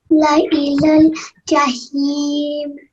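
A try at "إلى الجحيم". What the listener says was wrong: Excellent, well done.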